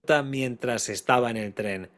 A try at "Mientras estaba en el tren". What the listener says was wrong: In tren, maybe you didn't say L there, maybe. I think there is the slightest L there. Sometimes those definite articles are just dropped. L, tren.